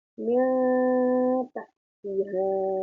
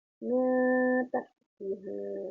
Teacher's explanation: Yang dibaca samar adalah nun sukunnya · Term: ikhfa